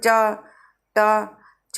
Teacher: तालव्य, तालु से छूती है जीभ।